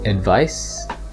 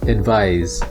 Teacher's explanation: Meanwhile, advise with an S is the verb. So in advice, the C is pronounced like an S, while in the word advise, the S is pronounced like a Z.